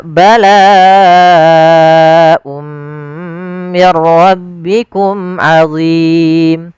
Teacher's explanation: Walafal mir rabbikum, di sini nun sukun bertemu ra, maka kita namakan dengan idgham bila gunnah. Hanya masuk saja nunnya kita masukkan ke ra, dihilang awalnya min rabbikum, karena ketemu ra diganti mir ra langsung.